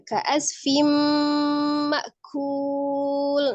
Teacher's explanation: Kemudian digunnahkan, didengungkan suaranya sebagian masuk ke rongga hidung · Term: idgham bi gunnah